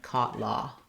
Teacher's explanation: it's a mid-back rounded vowel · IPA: /ɔ/